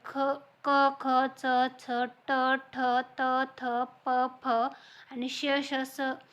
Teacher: आणि श स हे जे आहेत ते कठोर वर्ण आहेत तर कठोर वर्णाला जे आहे तर त्याला अघोष वर्ण किंवा श्वासघोष वर्ण असेही म्हटलं जातं